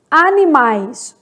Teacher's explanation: Animais, do A pro I, desce de novo, ó. Animais, ditongo decrescente.